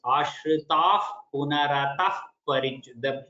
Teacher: Both the visargas, the उपध्वनीया sound, that is almost like F sound should come.